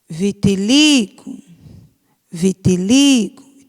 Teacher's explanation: Vitiligo Vitiligo sílaba tônica é o Li